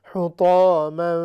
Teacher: طا، یہ حروف مستعلیہ میں سے موٹا حرف ہے۔